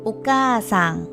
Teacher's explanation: we basically extend the vowel sound a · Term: long vowel sound